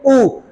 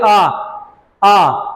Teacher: अब वृत्तमुखी में हम देखते हैं कि जो जब ऊ को बोलेंगे, ऊ को बोलने के लिए होठों को आगे की ओर करना पड़ेगा। · तो वृत्तमुखी जो होता है, इसमें देखो, बोल के देखिए, ऊ तो होठ आगे की ओर गए तो वृत्तमुखी, और अगर हम बोले आ तो बराबर की ओर खींचा तो किस में जाएगा? अवृत्तमुखी में जाएगा।